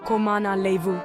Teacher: The N at the end of comment is nasal.